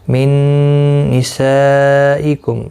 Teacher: نون ساکن کے بعد یرملون کا نون آیا، ادغام مع الغنہ ہوگا